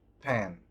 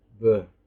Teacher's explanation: bilabial plosive. For the voiceless, p. For the voiced, b.